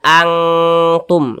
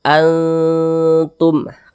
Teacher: Jangan dibaca angtum, jangan dibaca ang, tapi dibaca antum. Kita dengungkan, didengungkan itu digunahkan. Jadi suaranya itu kita tahan ya, kita panjangkan sebentar. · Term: ikhfa Hakiki aqrab, ikhfa hakiki aqrab